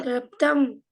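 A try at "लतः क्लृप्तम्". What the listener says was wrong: La. This only. There's no rikara here. La. Klaptam.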